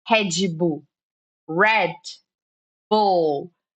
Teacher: Então, é o que acontece no inglês. É esse R mais forte, ok? Que a gente chama de R retroflexo, ok? A língua, ela fica lá atrás, ela fica assim, ó.